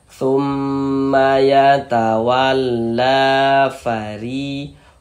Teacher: Huruf ro kalau dia memiliki harokat kasroh, maka huruf ro-nya dibaca tipis, dibaca tarkik.